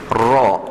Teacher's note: Setengah orang sebut innahu ghafur, ra dengan gha, bunyi dia memang agak dekat, tapi makhraj dia jauh. Ra hujung lidah dengan kita punya langit-langit